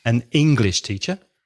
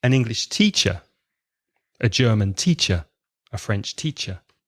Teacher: So the nationality is not stressed. The profession is stressed.